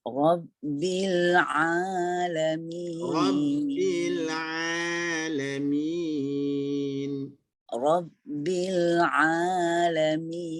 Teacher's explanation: Pada ain tu dah betul, nampak suara menekan tengah halqum betul. Tetapi lidah tu main peranan untuk menipiskan a tadi tu.